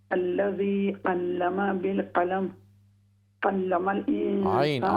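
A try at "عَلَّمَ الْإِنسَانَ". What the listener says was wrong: عین کو درست کیجیے. علم الانسان.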